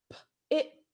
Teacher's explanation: So, I hear a sound, but my throat doesn't move. I never realized my throat does not move on t. It's unvoiced. T's are unvoiced, and especially here.